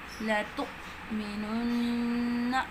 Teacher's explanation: حمزہ پہ جھٹکا دیں گے